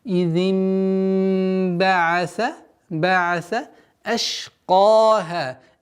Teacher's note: Иди, то же самое, огласовка кесра произносится четко. И с огласовки кесра мы уходим на назализацию в размере двух огласовок. Идим ба'аса со смыканием губ.